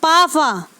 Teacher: यानी इनके उच्चारण में हमारे मुख से कंपन उत्पन्न नहीं होता, ये केवल श्वास के यानी सांस के माध्यम से ही उच्चारित होते हैं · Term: अघोष वर्ण